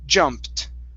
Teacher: this word here is jumped ending on a t sound